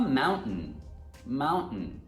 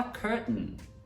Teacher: you glottalize the T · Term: glottal stop